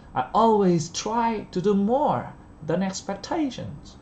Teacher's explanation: đừng thiếu âm Z nhé, người Việt Nam rất hay thiếu âm Z ở đây